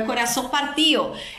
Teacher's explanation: escuta então ele cantou ou coração Partio que é coração partido mas ele não pronúncia o d ele aspira Essa d